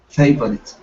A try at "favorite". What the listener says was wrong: Okay, give me a good R instead of favorite. Push the tongue down.